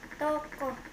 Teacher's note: vocal belakang sedang bawah bundar semi terbuka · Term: Vokal O